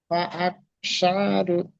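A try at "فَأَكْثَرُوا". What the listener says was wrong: সা নয়, সা, সা, জিবের আগা আর সামনের দুই দাঁতের আগার সাথে লেগে উচ্চারণ হবে সা। ফাআকসারু, সা,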